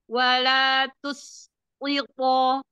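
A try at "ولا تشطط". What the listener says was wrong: shin. Shin, jangan sin.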